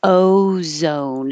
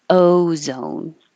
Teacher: your lips are starting unrounded oh and ended with an ooh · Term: American o